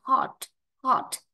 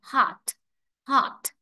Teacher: thì cái Chữ O này mà theo tiếng Anh Mỹ thì người ta lấy phiên âm Thành A dài